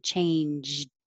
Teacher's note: I'm making the j and then I'm stopping it by putting my tongue in the d position. Changed. So I don't have to release it.